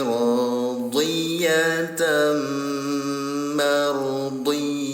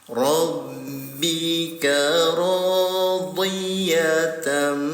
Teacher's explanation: nya tanwin bertemu dengan huruf mim namanya ig idgham biguna cara bacanya didengungkan selama dua harakat pertama bunyi tanwinnya tempelkan dulu ke huruf mim baru didengungkan